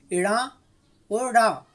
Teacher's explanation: इनके उच्चारण में जीभ ऊपर उठकर झटके के साथ नीचे गिरती है, ये उत्तिप्त व्यंजन कहलाते हैं।